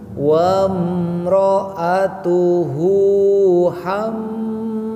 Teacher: ham mim tasydid disebut gunnah, panjangkan 3 harokat